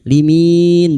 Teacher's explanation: bertemunya mad dengan huruf hidup yang dibaca wakaf. Mad arid sukun. Empat harakat kita panjangkan.